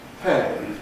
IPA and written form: peɪ (pay)